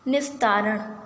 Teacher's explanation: यदि विसर्ग के बाद त आता है तो विसर्ग जो है वो दंत स में परिवर्तित हो जाता है, क्योंकि त का उच्चारण भी कहाँ से होता है, दंत से होता है।